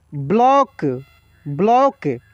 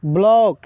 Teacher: इसका उच्चारण औ के रूप में होता है ठीक है ब्लॉक लेकिन पूरा ओ नहीं होता है